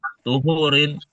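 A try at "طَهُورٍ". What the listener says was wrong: Tohur, bukan tuhur. Tohur. Kan air itu ada tohur, ada tohir, ada mutanajis. Tohur itu air suci yang mensucikan.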